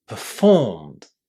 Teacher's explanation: There is very very strong stress on the second syllable. And this first syllable there sounds very very short.